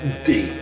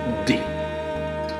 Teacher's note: And then again we have something in the middle, and that is d. Again there is a slight voice in the beginning, d, and then the voice stops and a slight air pressure is released